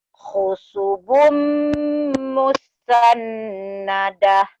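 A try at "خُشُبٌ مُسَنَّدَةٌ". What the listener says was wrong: Khusyubum shin.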